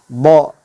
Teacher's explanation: Titik keluarnya adalah dari sisi lidah yang bertemu dengan gigi geraham atas